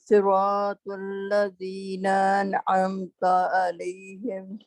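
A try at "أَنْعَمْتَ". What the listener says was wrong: نا آپ کا لمبا ہو گیا اس کو آپ نے نا کے ساتھ ان جلدی سے پڑھ لیں.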